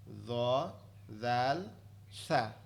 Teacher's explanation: এর পরেরটা হচ্ছে জিহ্বার আগা, জিহ্বার আগা সামনের উপরে দুই দাঁতের আগার সঙ্গে লাগায়া, দ দাল সা, জিহ্বার আগা সামনের উপরে দুই দাঁতের আগার সঙ্গে লাগবে, লেগে উচ্চারিত হবে দ দাল সা।